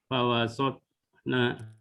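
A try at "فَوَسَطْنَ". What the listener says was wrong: Bukan sot, hati-hati. Fawasa. Fawasato. Fawasatona. Jadi bukan berarti difathahkan, tapi dia sifatnya mengarah ke harokat fathah.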